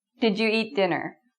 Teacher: It can either sound like didju with a j or didja. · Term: j sound